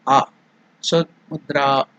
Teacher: There in the dra, a is elongated. That is dirgha.